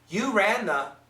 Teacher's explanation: We don't hear a clear TH.